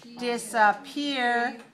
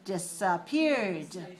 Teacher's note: 3 syllables, stress the 3rd syllable.